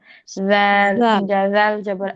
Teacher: জিহ্বাটা আগে বাড়িয়ে দিবেন, জাল জিহ্বার আগাটা উপরে দুই দাঁতের সাথে লাগাবেন, দুই দাঁতের আগার সাথে। জিহ্বার আগা উপরে দুই দাঁতের আগার সাথে লাগাবেন, জিহ্বাটা একটু বের করে দিবেন, তাহলে উচ্চারণটা সুন্দর হবে। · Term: নরম হরফ